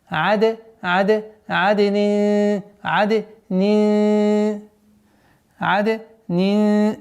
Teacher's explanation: Здесь у нас после айна калкаля. А после нуна ихфа.